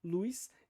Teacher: como na fala se fala com essa ditongação com essa Glide com essa semivogal